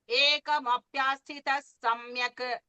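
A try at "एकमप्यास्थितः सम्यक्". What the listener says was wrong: Sthita, Mahaprana, little more stress you can give.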